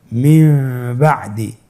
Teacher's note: নুন সাকিনের পরে যদি বা আসে তাহলে নুনকে মিম দ্বারা পরিবর্তন করে পড়তে হবে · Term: ইখলাবের